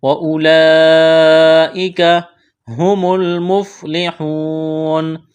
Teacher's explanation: واو مدہ ہے، ایک الف کے برابر کھینچنا ہے۔ یہاں جب وقف کریں گے اس آیت پر نون کو ساکن کریں گے۔